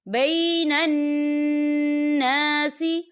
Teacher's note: یہاں نون مشدد ہے تو یہاں پر غنہ ہوگا، اور یہاں خالی الف سے پہلے زبر ہے، الف مدہ بھی ہو رہا ہے، تو ہم اسے 2 حرکت کے برابر کھینچیں گے۔